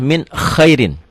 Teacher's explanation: Idhar dibaca jelas, tanpa ditahan, tanpa dengung.